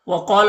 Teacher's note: قاف حروف مستعلیہ میں سے پر پڑھیں گے. یہاں پر الف مدہ ہے، ایک الف کے برابر کھینچیں گے.